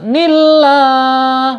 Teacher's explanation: Kemudian lanjut ya, nillah ya, di sini ada lam jalalah. Lam jalalahnya dibaca tarkik ya, dibaca tipis ya.